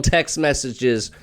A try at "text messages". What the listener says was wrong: Yeah, and I what I wanted to say was that it sounded like you said text mess. And Text mess. No, text mess. And it sounds like Tex-Mex.